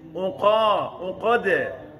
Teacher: Unqa kan qaf tebal, dal tipis.